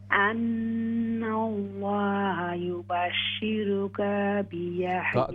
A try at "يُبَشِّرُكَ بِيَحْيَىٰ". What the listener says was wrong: काफ को लंबा न करें ना.